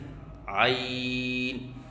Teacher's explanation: عین کو وسط حلق سے ادا کریں اور 3 الف کے برابر لمبا کر کے پڑھیں